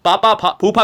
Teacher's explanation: जिसको वायु होठों से स्पर्श करते हुए निकलती है होठों से टच करके जाती है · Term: ओष्ठ व्यंजन